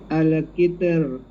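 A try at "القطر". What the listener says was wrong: Tak boleh. Al-Qitr. Sikit je. Jangan sampai nipis sangat. Jangan Al-Qitr. Dari nipis jadi ta pula tu. Tak boleh.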